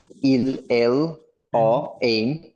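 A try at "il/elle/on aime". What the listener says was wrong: ওর সাথে যখন যাচ্ছেন দেখেন ওর শেষে একটা এন আছে, এটা লেগে যাবে ওর সাথে, অনেম শোনা যাবে।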